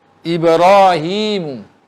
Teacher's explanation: Ni ra ni ditafkhimkan kerana dia sendiri baris di atas.